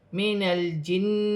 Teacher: نون ساکن میں غنہ نہیں کیا جائے گا کیونکہ آگے حمزہ آ رہی ہے